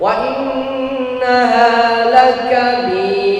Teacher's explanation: kita bacanya dengan sekali izlaq saja, sekali atau mungkin toleransinya sampai 2 kali getaran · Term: huruf ra